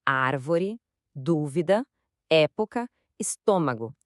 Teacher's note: Escuta só esses exemplos: árvore, dúvida, época, estômago. A força tá sempre na antipenúltima sílaba · A força está sempre na antepenúltima sílaba. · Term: proparoxítona